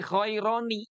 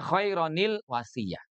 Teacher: Tanwinnya atau nun sukunnya itu diganti dengan bunyi kasroh. Nun kasroh.